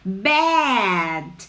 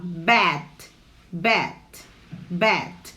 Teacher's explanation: o mal, quando ele tem esse A, ele é mais aberto